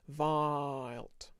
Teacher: it's almost like an R vowel for the whole thing, and then we just stick in the ilt at the end